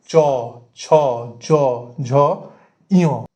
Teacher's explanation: খুব ভালোভাবে নিজেরা দেখলেই বুঝতে পারবেন যে এই যে অক্ষরগুলো, সেগুলো গলায় হাত দিয়ে যদি উচ্চারণ করেন, তাহলে প্রত্যেকটা কিন্তু কণ্ঠ থেকে বেরোচ্ছে। ঠিক সেরকম চ বর্গ, যেটা তালুতে এসে শ্বাসবায়ুটা ধাক্কা মারছে, আর তার ফলে যে আওয়াজটা বেরোচ্ছে চ, ছ, জ, ঝ, ইয়।